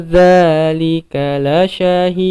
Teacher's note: di sini lika lasya, di situ semua pendek, jangan ada yang memanjang